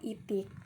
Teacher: bunyi depannya itu tinggi dan tidak bulat